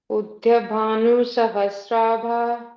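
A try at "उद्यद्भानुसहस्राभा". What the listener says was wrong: Yet there is one id in between. Udyat bhanu sahasrabha.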